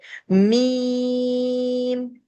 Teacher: میم، میم ہمارا حروف شفی ہے، ہمارے ہونٹ میش ہوتے ہیں اور دونوں ہونٹ دبتے ہیں آپس میں اندر کی طرف اور پھر یہ لفظ ادا ہوتا ہے